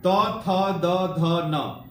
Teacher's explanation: इसको बोलने पर आपका जीभ जो है ना आपके दांतों में सट रहा है।